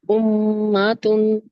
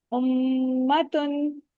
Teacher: माँ को लंबा नहीं करना, ठीक है। उम्मतुन।